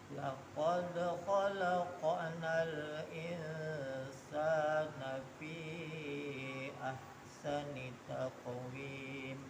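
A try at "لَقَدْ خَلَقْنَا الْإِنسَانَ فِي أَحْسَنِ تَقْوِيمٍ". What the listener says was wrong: Huruf sin itu jika kita ucapkan kayak orang tersenyum. Laqad khalaqnal insana fi. Jangan ditutup mulutnya. Laqad khalaqnal Jangan nal. Dijaga lamnya, jangan qalqalah.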